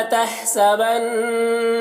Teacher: تحسبن نون مشدد ہے، نون میں غنہ ہوگا